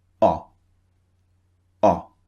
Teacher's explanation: Remember to keep your lips not very round, slightly round. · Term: the shorter vowel